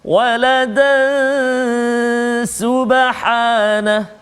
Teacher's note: Tetapi kalau kita sambung bacaan kita, maka dekat situ dia berlaku tanwin bertemu dengan sin, iaitu ikhfa hakiki, dengung 2 harakat bacaan dia.